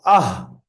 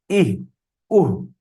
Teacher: যখন আপনি আহ বলবেন তখন গলার শুরু থেকে উচ্চারণ হবে